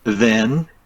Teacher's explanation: Yeah, you can compare the n to the m sound. But when the n stands at the end of the word, sometimes the student just mispronounce as m. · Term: final n